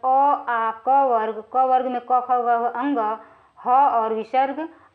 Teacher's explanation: ये सब कंठ से बोले जाते हैं